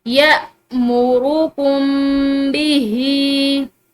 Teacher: हमजा जो है वो झटके के साथ पढ़ा जाता है, नरमी और आसानी के साथ नहीं बल्कि झटके के साथ